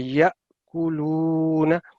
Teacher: جی اب یہ دیکھیں، یہ ہم نے پچھلی دفعہ میں پڑھایا تھا جی جی جی جی کہ یہ حمزہ ساکن جب الف کے اوپر سکون کی علامت ہو تو پھر اس کو ہلکے سے جھٹکے کے ساتھ ادا کیا جاتا ہے